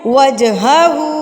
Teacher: الٹا پیش ہے، اس کو ایک الف کے برابر کھینچیں گے، ایک الف کے برابر لمبا